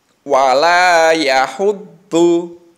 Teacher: Dotnya itu harus ditekan karena ada sidahnya.